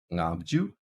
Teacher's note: allows our ing sound, or ng sound, our velar nasal, at the beginning of a syllable